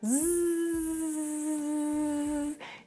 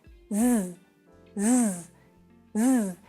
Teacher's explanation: pour bien prononcer le [z] avec les cordes vocales qui vibrent